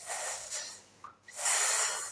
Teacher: Los dientes frontales de arriba y abajo se acercan entre ellos, alineándose. El cuerpo de la lengua, ya no la punta, sino un poco más atrás de la punta, está casi tocando la cresta alveolar, así que se curvea. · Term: alveolares y fricativas